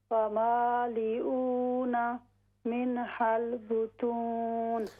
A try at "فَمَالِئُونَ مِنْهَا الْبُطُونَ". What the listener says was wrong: ہاں بطون کی بجائے بطو. ہاں ناک سے آواز اس کی نہیں آئے گی. من حل بطون نہیں، من حل بطون.